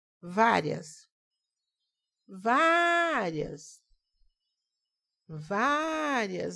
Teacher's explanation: O vá é a sílaba tônica.